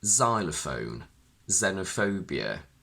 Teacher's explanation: The letter X can also be found in initial position of a very few Greek words, and in this case it's pronounced only as Z